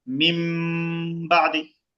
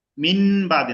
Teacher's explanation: যদি শুধু বাটা আসে তখন নুন সাকিন আর থাকে না, এটা মিম হয়ে যায়।